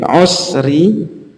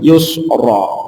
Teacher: Terus rok tafkhim dan rok tarqiq juga. Kalau kasroh, roknya itu kasroh, maka rok tarqiq atau tipis, membacanya muraqqaqah. Jadi usri. Kalau rok yang fathah jadi tebal, yusra